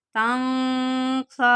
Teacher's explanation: अब नून साकिन के बाद उन हरूफ में से सीन ये आ रहा है तो यहाँ पे इख्फा करेंगे